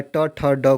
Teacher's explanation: ट ठ ड को क्या बोलते हैं मुर्धा व्यंजन बोलते हैं मुर्धा से इसका उच्चारण स्थान होता है